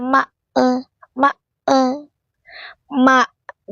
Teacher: tahan napas, tahan suara pada hamzah